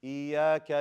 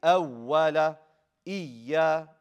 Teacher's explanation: You do nabr. You put emphasis on the ya. Show that there's 2.